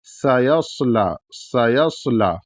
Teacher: سین بھی ہے اور صاد بھی ہے، تو سین پتلا ہوگا اور صاد موٹا ہوگا، دونوں میں سیٹی کی آواز ہوگی. سیصلا، سیصلا.